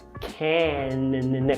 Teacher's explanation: Cuidado para não falar can, nasalizando